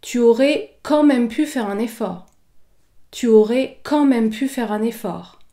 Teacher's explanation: Tu aurais quand même pu faire un effort. Ici, j'accentue la syllabe quand